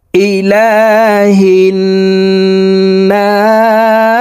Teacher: না 3 আলিফ টেনে সিনকে সাকিন করে ফেলবো কারণ মধ্যে আরজি 3 আলিফ টানিয়া পড়িতে হয় ইলাহিন নাস মিম